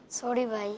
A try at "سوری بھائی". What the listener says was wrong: ایسے نہیں، تھوڑا معافی والے انداز پر بولیں،